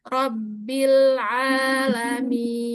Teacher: huruf nun mim yang waqaf itu jangan kelamaan karena dia masuk ke gunah naqisoh